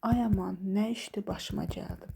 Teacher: Burada ay aman sözünü belə çığıraraq, bağıraraq deyirəmsə, bu artıq məntiqi həyəcanlı vurğu hesab olunur